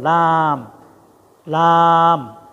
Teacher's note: 7 নম্বর। 8 নম্বর জিহ্বার গোড়ার কিনারা সামনের উপরের দাঁতের মাড়ির সঙ্গে লাগায়, সহজ এটা, লাম, লাম।